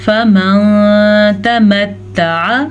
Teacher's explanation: نون ساکن کے بعد تا حروف اخفا میں سے ہے تو یہاں پہ اخفا کریں گے